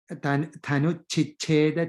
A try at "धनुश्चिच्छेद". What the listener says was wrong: Dhanush, that's a ish. Dhanush Chicheda, okay? Sometimes you may have Danuhu in some books, so put a ish to join it, that's all.